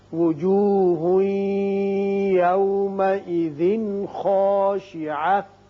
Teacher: یہاں ہا کے اوپر 2 پیش تنوین ہے، بعد میں یا آ رہا ہے تو یہاں ادغام غننے کے ساتھ کریں گے، لیکن یہاں تنوین کے بعد خا حروف حلقی میں سے ہے، لہذا یہاں اظہار حلقی ہوگا